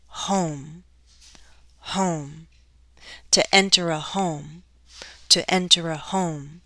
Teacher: i have only one syllable one vowel sound to glide down